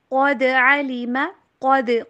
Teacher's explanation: قاف کو موٹا پڑھیں گے اور دال کے اوپر کلکلا. قاف موٹے حروف میں سے ہے.